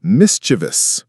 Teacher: The common mistake is stressing the second syllable, but the correct pronunciation is mischievous. The stress is on the first syllable, and it has 3 syllables, not 4.